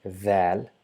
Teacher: Z is somewhere hiding while trying to pronounce the. So it's the mixture of the and Z to produce the sound Dhal by touching the tip of the tongue along with the tip of the top two incisors.